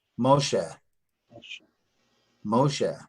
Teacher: what that does is that lengthens that act sound Moshe Moshe there's a definite air sound at the end of this word Moshe